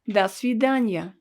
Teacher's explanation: will say dasidanya notice that we pronounce it all together and this letter o is pronounced as ah because it's not stressed